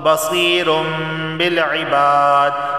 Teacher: تنوین کے بعد با آیا ہے تو یہاں پر اقلاب کا قاعدہ لاگو ہوگا